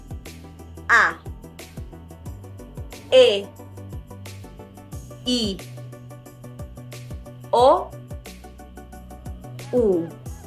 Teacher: A, when you need to have your mouth open, A. Then it closes a little bit for E. It closes a little bit more for I. Then it opens again for O. And it closes a little bit more for U.